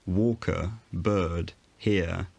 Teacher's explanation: in upper class london speech the er sound didn't appear before a consonant or a pause in speech so in the word walker bird here you can't hear a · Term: non-rhotic